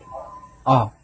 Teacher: Tandaan lang po natin mga kalanga na ang literang O sa mulbog, ang bigkas niyan ay O. A sa kalagitnaan ng A at ng O sound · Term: espesyal na tunog